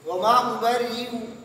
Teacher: حمزہ بھی پڑھیں گے لیکن حمزہ مکمل بھی نہیں پڑھیں گے اور نہ مکمل واو کی طرح پڑھیں گے. وہ تیسری صورت ہے ابدال بالیا وقف بالروم. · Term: تسہیل کالواو مع الروم